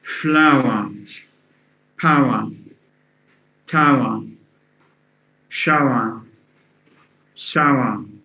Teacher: So flower would have the ow plus schwa, our, the triphthong, our.